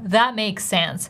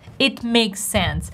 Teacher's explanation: I don't say it makes sense, because makes ends with S. Sense starts with S. That's why we put them together and we pronounce one S.